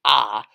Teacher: And while there are vowel-sounding hieroglyphs like ah, that's much more of a guttural throat sound than an actual A